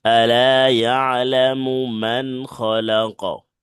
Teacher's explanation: নুন সাকিনের পরে খ এসেছে ইজহারের হরফ, স্পষ্ট করতে হবে।